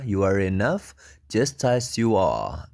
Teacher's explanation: r-nya yang belakang hilang